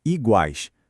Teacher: Ele sai de uma vez só num único impulso. É uma semivogal, uma vogal e outra semivogal. Todas ali formando uma unidade sonora bem forte. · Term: tritongo